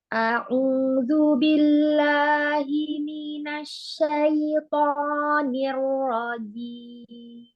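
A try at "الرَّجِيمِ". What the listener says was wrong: Ya, roknya dikit lagi, tambahkan nih rojim.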